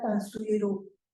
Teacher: Hay una metátesis aquí entre estas secuencias suni, que se convierte en sui, y luego la última sílaba pierde su S final, pero do, en bribri, la D se pronuncia R entre vocales, entonces se convierte en R, ya Tansuiro, y la vocal del bribri es un poquito más cerrada que la O del español, entonces tan suiru.